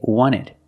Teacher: you have NT in the middle the t is silent